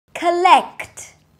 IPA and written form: kəˈlɛkt (collect)